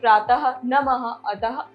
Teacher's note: इसका उच्चारण आधे ह की तरह कंठ की सहायता से होता है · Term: विसर्ग